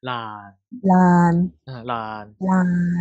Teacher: We don't pronounce it as an N. So we pronounce it as an L.